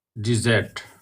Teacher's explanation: when we say dessert, you notice that that double s becomes a zed sound. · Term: z sound